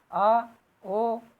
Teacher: जिन स्वरों के उच्चारण में पीछे का भाग ऊपर उठता है उसे पश स्वर कहते हैं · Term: पश्च स्वर